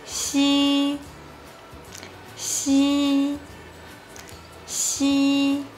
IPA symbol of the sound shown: ɕ